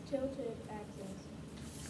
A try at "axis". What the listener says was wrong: not access, but axis.